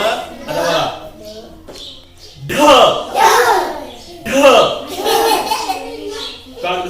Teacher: कारण पोटातून ह आवाज आली हवा पण आली आवाज आला